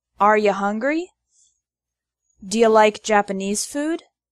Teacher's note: The word you often becomes ya in informal spoken English.